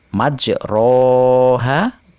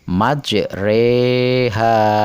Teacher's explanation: yaitu menyondongkan fathah pada kasroh sehingga berbunyi e. Majroha dibaca majreha. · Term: bacaan imalah